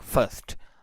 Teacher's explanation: So in non-rhotic accent or in RP accent, first is transcribed and pronounced like first. R is completely you can say skipped in such situation, because after R there is a consonant sound. But in rhotic accent or American accent, R is always pronounced and it is transcribed like this: first.